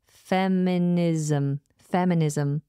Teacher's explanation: notice how that s becomes a zed sound